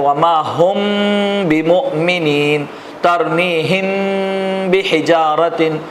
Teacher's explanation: میم ساکن کے بعد با آئے تو غنہ کے ساتھ اخفا کریں گے. اس کو اخفاء شفوی کہتے ہیں.